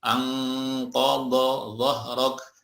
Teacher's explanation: Semuanya ikhfa-nya atau gunnahnya menjadi tebal ya.